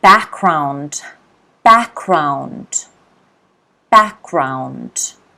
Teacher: Here you've got to notice that the G is not pronounced.